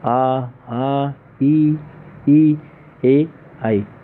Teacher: अवृत्ताकार स्वर उच्चारण करने पर होठों का आकार गोल नहीं होकर होठों के ऊपर नीचे फैल जाता है।